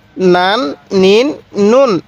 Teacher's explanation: আমি কিন্তু উচ্চারণ করতেছি প্রত্যেকটা শব্দের শেষে দন্তান্য উচ্চারণ হয় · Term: তানবিনের উচ্চারণ